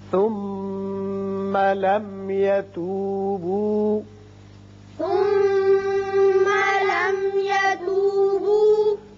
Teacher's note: یہ میم مشدد حرف غنہ ہے، یہاں غنہ کیجئے · یہ میم ساکن جو ہے یہاں اظہار شفوی ہوگا